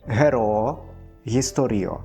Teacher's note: Літара ГО чытаецца як ГО фрыкатыўная.